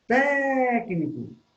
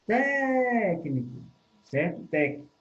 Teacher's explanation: A sílaba tônica é té. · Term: proparoxítona